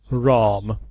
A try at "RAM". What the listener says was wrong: Sorry, it sounds like you're saying ROM, not RAM.